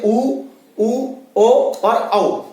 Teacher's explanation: उच्चारण करके देख ले, जैसे उ ओ और औ। जब भी हम ये चारों स्वर बोलते हैं तो हमारा जो मुंह है यानी कि हमारे जो होठ है वो उनकी आकृति गोल हो जाती है, इसलिए ये 4 वृत्ताकार है और बाकी स्वर अवृत्ताकार है क्योंकि इनमें हमारा होठ गोल नहीं होता।